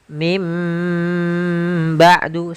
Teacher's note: dengan bukan Min ba'du tapi mim ba'du sambil ditahan dengan gunahnya yaitu suara nunnya dirubah menjadi suara huruf mim jadi ikqlab itu merubah huruf suara huruf nun menjadi suara huruf